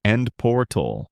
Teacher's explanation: people say end portal with emphasis on the first word endor making it sound firm and direct. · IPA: /ˈɛnd ˈpɔːrtəl/